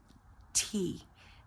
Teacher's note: So you got the T, aspirate the air, it's aspirated